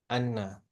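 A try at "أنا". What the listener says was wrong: Ana. Jangan Anna. Ana. Ana.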